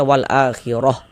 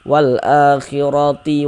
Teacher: kalau kita wasalkan ya tidak berhenti kita di huruf ta marbutah, maka yang dibaca huruf ta